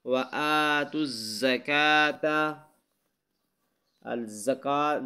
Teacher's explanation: زکاة کی زا کو سخت پڑھنا ہے، یہاں کاف کو باریک پڑھنا ہے